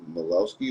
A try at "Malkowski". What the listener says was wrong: Yeah, throw the K in there, Malkowski. But you're close enough.